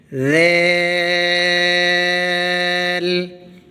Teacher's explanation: زبان کی نوک اوپر والے سامنے کے دانتوں کی جڑ میں لگانی ہے اور بریک آواز نکالنی ہے دال کو پڑھتے ہوئے، دیل۔ سامنے والے دانتوں کے نیچے زبان لگا کر ذیل پڑھا جائے گا بریک آواز کے ساتھ